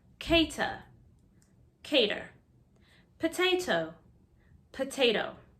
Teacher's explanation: We love to change the T to D when it's in the middle of a word. That's why potato has the first T that's hard and the second T that's like a D.